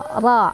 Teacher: Ra-nya dibaca secara tafkhim karena ra-nya barisnya fathah. Jadi cara bacanya tebal ya